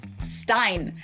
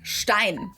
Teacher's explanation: In German, this word is pronounced Stein. ST at the beginning of a word always turns the S into a sh sound in German.